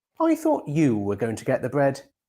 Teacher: In this sentence, the bread has already been mentioned, so it's old information, and you pronounce it with a rising tone. However, the word you gets a falling tone because this is the new idea in the sentence.